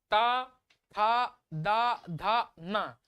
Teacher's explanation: दंती से हम त वर्ग बोलते है